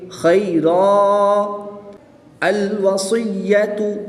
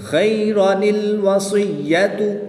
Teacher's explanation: دوبارہ رپیٹ کر رہا ہوں، جب وقف کریں گے تب الف مدہ کریں گے خیرا الوصیۃ، اور جب وقف نہیں کریں گے تو اس کو الف مدہ نہیں کریں گے، نون کو لام کے ساتھ ملا کے پڑھیں گے خیرا الوصیۃ۔